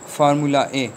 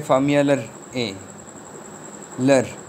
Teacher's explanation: वो वर्ड्स बोलते हैं जिनके एंड पे आर नहीं आता, तब भी आर उस पर लगा देते हैं। ऐसे आर को इंट्रूसिव आर कहा जाता है।